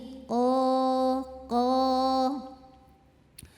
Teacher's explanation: Oke kita lanjut ljut qolal qo pangkal lidah ngangkat lagi ya makhrajnya dari pangkal lidah yang terangkat ya qof tuh tidak ada angin tidak terlalu dalam